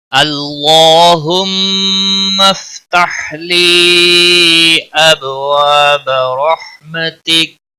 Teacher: اب با ساکن پر قلقلہ ہوگا، وا الف مدہ ہے، ایک الف کے برابر کھینچ کر پڑھیں گے، با کو کھینچنا نہیں۔ رحمتک را زبر کی وجہ سے پر پڑا جائے گا، ہا کو ہلانا نہیں، باقی کسی بھی حرکت والے حرف کو کھینچنا نہیں۔